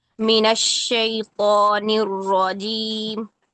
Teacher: را مشدد میں تکرار کم ہوتی ہے۔